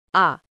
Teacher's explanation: নিম্ন স্বরধ্বনি আ জিহ্বা সর্বনিম্ন থাকে